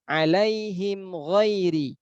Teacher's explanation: Mim sukun berjumpa dengan gha. Mim itu di bibir, ghain itu dia adalah di adnal halqi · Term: mutabaidain